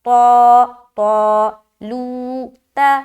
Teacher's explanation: اب جب طا کو موٹا ادا کریں گے تو الف مدہ بھی موٹا ہو جائے گا